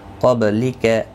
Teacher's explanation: نون ساکن کے بعد حروف اقفا کا قاف آئے، اقفا حقیقی ہوگا۔ قاف حروف مستعلیہ بھی ہے، پر پڑھا جائے گا، با ساکن پر قلقلہ ہوگا